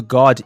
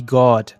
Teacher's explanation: perceba que a diferença de alongamento da vogal muda o significado da palavra